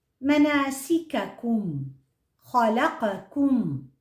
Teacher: حرف الكاف أقرب إلى مقدمة الفم وأسفل من القاف. تخرج الكاف من أقصى اللسان مع ما يحاذيه من الحنك الأعلى، وتحديدا من المنطقة ما بين الرخوة والصلبة.